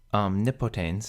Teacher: Omnipotens has the accent on the antepenult because the penult here is short.